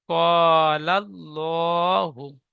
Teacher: আল্লাহ শব্দের ডান দিকে যাবার এসেছে, তাই আল্লাহ লামকে পুর অর্থাৎ ল পড়তে হয়।